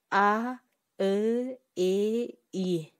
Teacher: Буларды айтканда эч кандай үндө эриндерибиз чормоюнку, кууш абалда болгон жок. Демек, булар эринсиз үндүүлөр деп аталат.